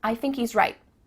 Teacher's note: at the end of the word right there's no t sound